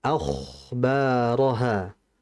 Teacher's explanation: kho-nya dialirkan lagi disertai dengan ketebalan